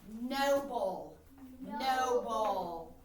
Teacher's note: syllables in noble first syllable no first syllable no second syllable and the accent is on the first syllable